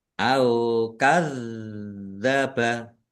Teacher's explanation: Zalnya dibaca double, ada tasdidnya, ditekan dan ditahan biar tampak double.